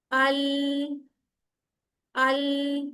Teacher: लाम को आपने हलाना नहीं है। ये उन हरूफ में से नहीं है जिनको हलाया जाएगा। यानी इस पर कलकला नहीं होगा।